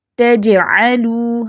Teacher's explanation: حالت سکون میں جب ہم جیم پڑھیں گے یعنی کہ جیم پر ساکن حرکت ہوگی تو آواز اچھلے گی، جسے قلقلہ کہتے ہیں